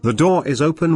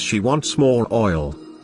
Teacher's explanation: The R sound is usually not articulated in standard British English at the final positions of words. But when it is followed by a word that begins with a vowel sound, it is articulated.